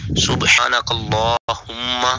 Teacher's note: کاف کو لام کے ساتھ جب ملانا ہے تو لام کو پھر پور کرنا ہے